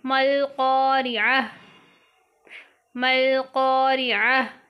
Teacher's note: یہ گول تا ہا میں بدلے گی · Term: وقف